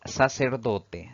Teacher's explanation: esta palabra tiene cuatro sílabas sin embargo la mayor fuerza de voz al pronunciarla recae en la penúltima sílaba contando de derecha a izquierda eso la convierte en una palabra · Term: palabra grave